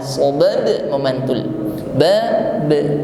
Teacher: Huruf ba sukun mengeluarkan sifat qalqalah